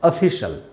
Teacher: शल है, शियल नहीं बोलना है, और ये अ का साउंड नहीं है, आधा अ का साउंड है